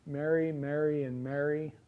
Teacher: I pronounce those three words, Mary, Mary, and Mary. I pronounce them the same. There are dialects of English that have different pronunciations for some of them.